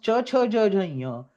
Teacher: When you pronounce Cha, Cha, Ja, Ja, Ya, the Jivha Madhya is touching the Talu.